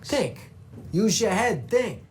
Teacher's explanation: if a word starts or ends with a th sound, we're going to turn that into a dental duh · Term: hard th sound